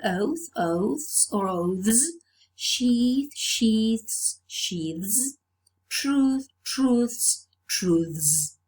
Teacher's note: the voiceless fricative changes to voiced. So the plural is realized by means of this consonant alternation, where the voiceless sound, consonant sound, changes to a voiced consonant sound.